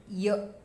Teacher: और य का तालु से है